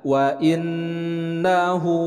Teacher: nun bertasydid, nun bertasydid, dibaca gunnah.